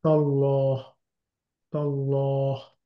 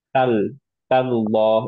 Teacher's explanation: কিন্তু দুইটা লামই হেভি